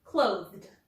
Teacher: Clothe, which ends in the voiced th